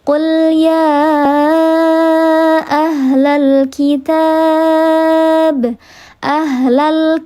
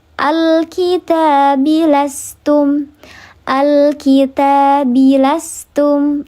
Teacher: Ini hamzah wasal nih. Hamzah yang mana ketika di tengah kalimat dia tidak dibaca, sedangkan kalau di awal kalimat dia dibaca.